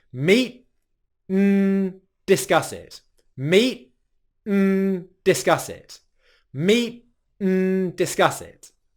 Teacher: Our tongue actually stays in the same position for the 't', 'n', and 'd' sounds and all that happens is the airflow transitions from the 't'